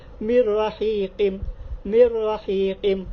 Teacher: تو یہ بھی نون ساکن کے بعد را کی ہے، اس میں بھی آپ غنہ نہیں کریں گے، بغیر غنہ کے پڑھیں گے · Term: ادغام بغیر غنہ